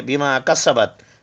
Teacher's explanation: سین whistling sound ہے، سیٹی والا sound